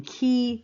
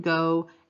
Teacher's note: the velar sounds, where the tongue dorsum, or the back of the tongue, and the velum come together